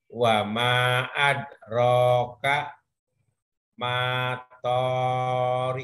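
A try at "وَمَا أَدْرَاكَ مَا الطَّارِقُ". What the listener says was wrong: Iya, maknya tapi pendek karena ketemu alif lam samsiah. Wa ma adrok kamat torik. Jadi terpaksa Pak. Kadang-kadang kalau belajar tasdid itu kayak ngebentak. Kalau nggak dibentak ketemu.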